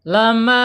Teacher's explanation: Al-jaub yaitu keluarnya tetap di rongga mulut ya, tidak boleh masuk ke hidung.